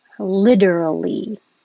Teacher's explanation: The T changes to a D